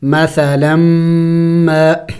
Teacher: مثلا ما کو لمبا کریں گے 1 الف کے مقدار، اس لیے کہ الف مدہ ہے